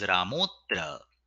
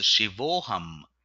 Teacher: The Visarga that has A on the left and A on the right combines with both the akaras and produces a single okara usually written with an avagraha chinna.